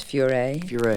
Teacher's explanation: With the accent on the last syllable.